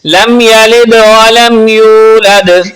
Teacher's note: لم یلد، یہاں پر میم ساکن کا قاعدہ یعنی رول اپلائی ہو رہا ہے۔ جب میم ساکن کے بعد با اور میم کے علاوہ کوئی بھی حرف آ جائے، جس طرح کہ یہاں پر یا موجود ہے، تو وہاں غنہ نہیں کرتے، یعنی اس طرح نہیں پڑھنا لم یلد ولم یولد، اس طرح نہیں، بلکہ ملا کے پڑھنا ہے، لم یلد ولم یولد۔ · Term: اظہار شفوی